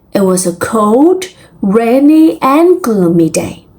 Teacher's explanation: So if we apply rising and falling intonation, we are going up for the listing and going down when the listing is over